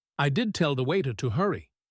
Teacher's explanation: She stresses did to show she tried to help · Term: stressed auxiliary verbs